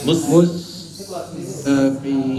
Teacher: Kalau mus ada desisannya, punggung lidah enggak naik ketika membaca mus.